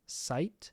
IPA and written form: saɪt (site)